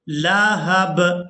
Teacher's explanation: یہاں با کو ساکن کر دیں گے وقف کی وجہ سے